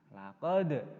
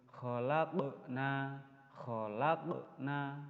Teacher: Yang benar itu kalau dal sukun itu harus memantul, yaitu namanya bacaan qalqalah